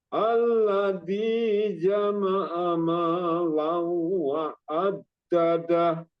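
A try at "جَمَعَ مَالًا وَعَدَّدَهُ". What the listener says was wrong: Ya, launya ditambahin sedikit. Lau wa addadah.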